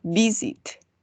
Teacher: Tenemos el golpe de voz en la primera sílaba. Entonces, en este caso, no vamos a doblar.